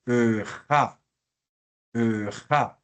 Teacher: La ja no la decimos K porque recuerden que después de una vocal, este sonido se vuelve fricativo, entonces decimos ja en vez de K